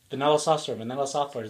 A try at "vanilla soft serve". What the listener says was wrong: It sounds like you're saying software.